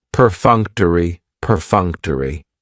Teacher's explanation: That third syllable has the schwah and it's going to end with that long e sound.